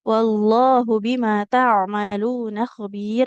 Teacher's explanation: Kalau huruf ain itu kan di tengah tenggorokan ya. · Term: huruf ain sukun